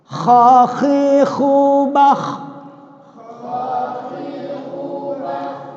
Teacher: Coba kita baca makhrajnya huruf kha di atas tenggorokan